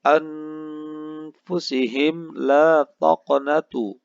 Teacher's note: Dilanjutkan ada anfusihim la taqnatu, di mana mim sukun bertemu dengan lam alif. Hukum bacaannya adalah izhar syafawi, di mana dibaca secara jelas atau tegas.